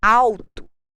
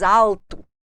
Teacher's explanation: As pessoas da zona urbana têm o hábito de dizer alto, com som de U, o gaúcho diz alto.